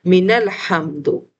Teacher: ہم نے اس نون ساکن کو پھر لام سے ملانا ہے